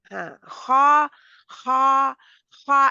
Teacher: मेरा मुंह बिल्कुल खुला है मेरा मुंह गोल नहीं है खा क्योंकि मेरी जुबान की जड़ पीछे से उठी हुई है · اب ہا ہا ہاں خا خا خا، میرا منہ بالکل کھلا ہے، میرا منہ گول نہیں ہے، خا کیونکہ میری زبان کی جڑ پیچھے سے اٹھی ہوئی ہے جس کی وجہ سے منہ میں پریشر آتا ہے